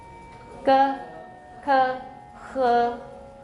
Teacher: Those are all dorsal. They use the back of the tongue. They're in the back of the vocal tract.